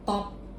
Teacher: In the word top, the sound pronounced with stronger breath, or what we call is aspiration.